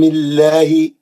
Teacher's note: جب اس میں جلالہ اللہ سے پہلے زیر والا حرف ہو تو آواز پتلی کر کے پڑھتے ہیں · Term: ترخیص